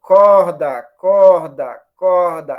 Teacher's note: é uma velar fricativa sonora